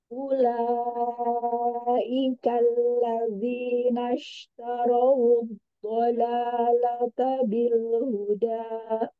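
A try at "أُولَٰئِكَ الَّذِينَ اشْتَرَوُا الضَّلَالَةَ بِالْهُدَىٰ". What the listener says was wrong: Ketika zal, ya berhati-hati. Ulaikal ladzi, nggak mau tebal, nggak ladzi. Ladzi.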